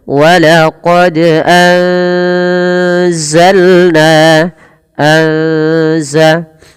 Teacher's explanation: Samarkan suara nunnya kepada huruf zai karena di sini ada bacaan ikhfa